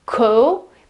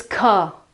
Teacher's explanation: The O is very open, and this is the meaning of the symbol here.